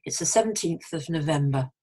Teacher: the stress migrates to november